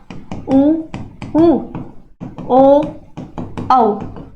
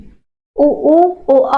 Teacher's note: गोलाकार या वृत्ताकार हो जाता है उसको कहा जाता है वृत्तमुखी। जैसे कि मैंने कहा उ शेप हो रहा है होठ का ऐसा, तो ये क्या होगा, उ, ओ, औ।